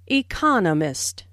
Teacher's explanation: This content word has new information, so it is emphasized. There are 4 syllables in economist, with the stress on the second syllable